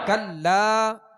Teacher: یہاں لام کے ساتھ الف ہے تو ایک الف کی مقدار کھینچ کر پڑھیں گے. الف مدہ ہے، الف سے پہلے زبر آ گیا لام کے اوپر، تو حروف مدہ کی جو ہم نے کل سبق کی مشق کی تھی یہ اسی میں سے. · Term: حرف مد